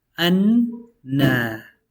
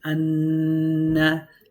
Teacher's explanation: One of the noons takes sukun, the other one takes fatha, so it's read as anna. You have to sit on it a bit because you have to pronounce both noons. Anna. And there's a rule in tajweed as well where you have to really pronounce it. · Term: double noon